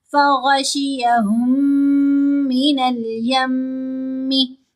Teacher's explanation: اب یہ جو ساکن میم ہے یہ مشدد میم کے اندر ہی مرج ہو جائے گی۔ فَغَشِيَهُمْ، اگر کوئی پڑھے فَغَشِيَهُمْ مِنَ الْيَمِّ تو پھر تو دونوں الفاظ کو علیحدہ علیحدہ کر دیا، ہم نے ان دونوں کو آپس میں جوڑنا ہے۔ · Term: ادغام شفوی